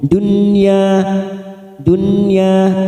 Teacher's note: Sama ad-dunya masuk kata huruf dal yang bertasdid ad-dunya, nun sukun bertemu ya idhar wajib atau idhar mutlak, kita baca jelas tanpa mendengung. Dunya, dunya ya 2 harokat fathah diikuti alif. · ya 2 harokat fathah diikuti alif. Dunya bimasabi, so fathah diikuti alif 2 harokat.